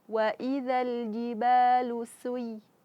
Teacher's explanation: Jangan sampai juga su, tapi harus dibunyikan karena dia sin harus bersifat sofir, yaitu keluar suara dari celah yang sempit